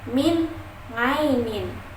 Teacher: nun mati itu bertemu dengan huruf ain maka termasuk ishar dan dibacanya jelas, tidak dengung sama sekali.